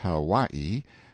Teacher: off mounted on my Noble Steed Hawaii pronounced how y e stress on second syllable